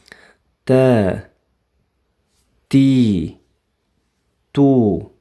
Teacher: ta harfining mag'raji tilning uchi va oldingi ikki ust tishining tubi. Ta harfi oʻzbek tilidagi ta undoshiga oʻxshaydi.